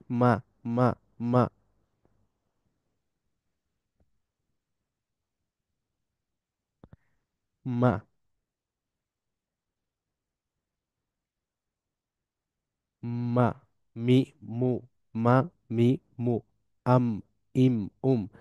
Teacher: Both lips come close completely. Sound flows through the nose. যে ঠোঁট লেগে যায়, কিন্তু বায়ের ক্ষেত্রে আমরা দেখছি, বায়ের ক্ষেত্রে আওয়াজটা ঠোঁট দিয়ে বের হয়, কিন্তু মিমের ক্ষেত্রে আওয়াজটা আসলে বের হয় নাক দিয়ে। · ইনিশিয়ালি নাক দিয়ে বের হয়, তারপর ঠোঁট খুলে মা, মা, মা, মা।